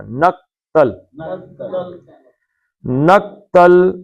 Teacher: نق کا کاف جو ہے نا اس کو کلکلے کی طرح نہیں پڑھنا. پتلا پڑھنا ہے. نقتل. نق نہیں پڑھنا.